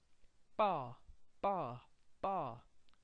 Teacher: This is a tensed P. Ba, ba, ba. Quick, tone goes up.